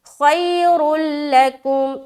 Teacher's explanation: را کو موٹا رکھتے ہوئے لام میں ملایا، ادغام تام ہوا، یعنی کہ بغیر غنے کے ادغام، اور کاف میم پیش کم۔